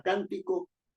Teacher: La palabra cántico lleva la mayor fuerza de voz en can